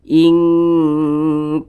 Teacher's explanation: didengungkan itu dipanjangkan suaranya sebentar sejenak kita tahan suaranya inktum nun sukun berjumpa dengan huruf ta nah perhatikan lagi huruf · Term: ikhfa Hakiki ab'ad, ikhfa hakiki ab'ad